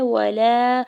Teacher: لام کے اوپر کھڑا زبر ہے دو حرکت کھینچ کے ادا کریں گے